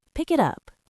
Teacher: The K sound at the end of pick moves to the I sound in it. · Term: linking